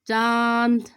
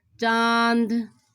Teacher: मुंह और नाक से बोले जाते हैं नाक से बोले जाते हैं आप बोल कर देख ना चांद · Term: अनुनासिक स्वर